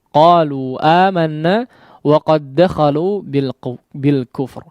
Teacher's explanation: Wa qad dakhalu ya, di situ dal bertemu dengan huruf dal, kondisi dal yang pertama adalah bertanda sukun, dal yang kedua berharakat sehingga diidghamkan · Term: idgham mutamathilain